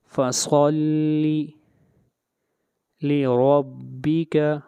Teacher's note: فصلی صاد کو موٹا پڑھیں گے، صاد حروف مستعلیہ میں سے ہے۔